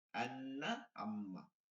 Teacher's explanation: নাকের বাসি হইতে গুন্না উচ্চারিত হয়